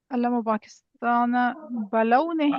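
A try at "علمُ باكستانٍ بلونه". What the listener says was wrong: اچھا پاکستان پر تنوین کیوں نہیں آئی حالانکہ مضاف الیہ ہے؟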